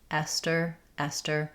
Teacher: We use a true T here because it's after the S. · In Esther, the letters th just say the t sound.